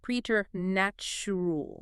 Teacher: You see p r e t and you instantly think it starts like president or present, but it uses a long e e sound.